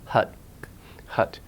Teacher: British English lip your lips are a little bit more rounded in American English your lips are bit more unrounded hut-hut